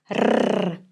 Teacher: Russian R is very different from English. We pronounce by moving the tip of the tongue very fast up and down.